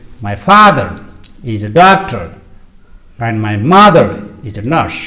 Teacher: four words father doctor mother nurse are stressed they are pronounced with the extra energy they are louder longer and higher they are louder and wise longer in duration higher in pitch